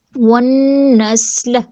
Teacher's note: نون میں شدد اکمل گنہ اور سین کی صفیر کو واضح کریں گے